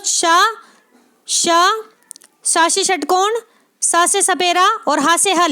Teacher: ये चारों ऊष्म व्यंजन होने के साथ साथ महाप्राण भी हैं